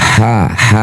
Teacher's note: ini punya sifat namanya hames. Mendesirkan udara. Ha ha ha udaranya lembut.